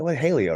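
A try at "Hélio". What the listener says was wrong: Ilio. And it's more of an E than an A sound, like an Ilio. Right. I believe it is.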